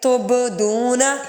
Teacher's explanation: با حروف کلکلہ میں سے ہے، اس لیے اس کو ہلا کے پڑھیں گے